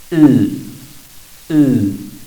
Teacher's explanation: Esta vocal se pronuncia colocando los labios como para hacer la I, pero la lengua como para hacer la U. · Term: sexta vocal